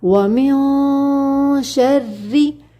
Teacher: پہلی بات یہاں پر دیکھیے، وَمِن کے اندر ہم نے کرنا ہے اخفا، وَمِن شَرِّ نہیں پڑھیں گے، وَمِن اخفا کے اندر زبان کو کہیں پر ٹچ نہیں کرنا ہوتا۔ ٹھیک ہے، زبان ہمارے منہ کے درمیان میں رہتی ہے، تب ہم اخفا کرتے ہیں۔